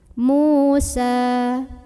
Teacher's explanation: huruf sin ini kita panjangkan cukup 2 harokat saja. Jadi walaupun berhenti, ya karena di depannya tidak ada huruf lain yang disukunkan, tetap aja hukumnya mad tabi'i 2 harokat, jangan lebih.